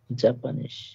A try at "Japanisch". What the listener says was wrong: Japanisch, not Japanese, কারণ হ্যাঁ জাপানিশ কেন? ইয়োটের মতো উচ্চারণ হয়, তাই হবে জাপানিশ।